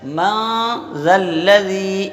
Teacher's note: سرا زبان اوپر والے دانتوں کا نچلا اندرونی حصہ جب ہم لگائیں گے تو ہمارا ذال ادا ہوگا، اور نیچے والے دانتوں کو زبان سے نہیں لگنے دینا ہے۔